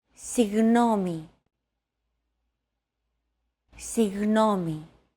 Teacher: your tongue and the back part of your mouth should be barely separated from each other while you blow a steady stream of air between the small separation. Another approach is to try to pronounce a G as if an H sound were to follow after it and hold that sound while you exhale.